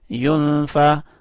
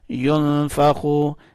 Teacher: نون کے اوپر اخفاء کرنا ہے یعنی نون کو تھوڑا سا چھپانا ہے